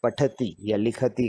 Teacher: शुद्ध उच्चारण होगा जैसे आप पठती या लिखती कहते हैं तो ख और ठ जो बीच में हम बोलते हैं वो महाप्राण अक्षर